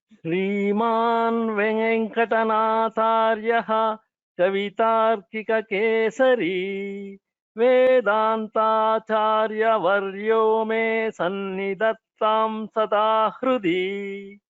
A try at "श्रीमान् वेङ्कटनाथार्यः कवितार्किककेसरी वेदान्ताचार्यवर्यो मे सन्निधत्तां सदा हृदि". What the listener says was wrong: If the Mahapranas are clearer, that would be better. For example, Nat Venkatanathāryah.